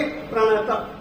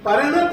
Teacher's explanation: प को हम मूल व्यंजन की तरह बोलेंगे स्वर रहित बोलेंगे प्रत परत नहीं बोलेंगे परन य हम बोलते है तो प